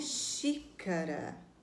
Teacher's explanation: Qual é a sílaba que a gente pronuncia com mais força? Ah, é o xi, de xícara. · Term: proparoxítona